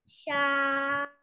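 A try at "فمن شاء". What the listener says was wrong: नून पे इख्फा करें बेटे। नहीं गलत है, दोबारा कोशिश करो भाई। मीम है, फा के बाद मीम है। आप आ कह रहे हो, क्या कर रहे हो?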